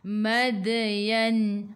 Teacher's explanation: Matikan dengan huruf nun, hujung lidah menyentuh gusi atas